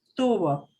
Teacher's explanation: they will sound exactly identical the b and the v